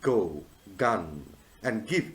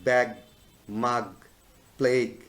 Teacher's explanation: The voiced velar sound here at the beginning of words like go, gun, and give